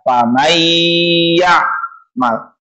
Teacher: dilebur bunyi n-nya ke dalam huruf selanjutnya, yakni iya, bigunnah menggunakan dengung